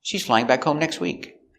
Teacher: It's an affirmative statement. The intonation goes down at the end.